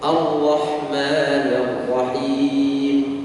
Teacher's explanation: Jadi yang benar adalah getarannya lembut atau ringan. Lembut getarannya.